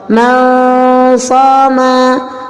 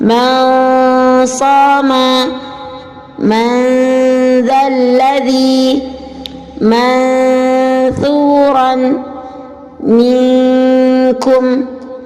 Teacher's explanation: Sekarang kita contohkan membaca hukum ikhfa, yaitu dengan menyamarkan makharijul huruf nun sukun. Samar itu adalah tidak sampai menghilangkan makhraj huruf yang pertama.